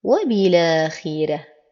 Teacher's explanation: لورش هنا النقل، أي تحريك الحرف الساكن بحركة الهمزة التي بعده، فيقوم بنقل حركة الهمزة إلى الساكن الذي قبله مع حذف الهمزة، ويعامل جميع اللامات التعريف المتبوعة بهمز بهذا الشكل، ولا ننسى حذف الهمزة.